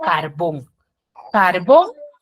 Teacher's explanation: tiene la mayor fuerza de voz en la última sílaba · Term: agudo